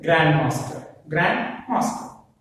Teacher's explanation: Stress falls on the grand.